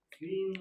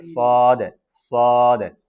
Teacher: সিন হবে মানে বাতাস বের হবে, আর সদের কিন্তু বাতাস একটু বের হবে না। আর ওটা সদ, সদ।